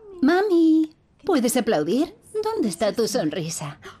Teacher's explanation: Es muy exagerada. Tiene un tono más alto. Tiene contornos de entonación exagerados. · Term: habla dirigida al bebé